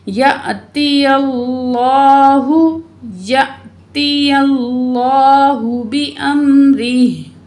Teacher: लफ्ज़ अल्लाह को पुर पढ़ा जाता है